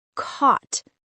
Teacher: Round your lips. Say caught. Open and back.